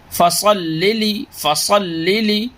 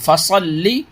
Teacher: فصلی، فصلی، یہ صاد کو لام سے ملائیے، لام کے اوپر تشدید ہے، لام کو ڈبل پڑھنا ہے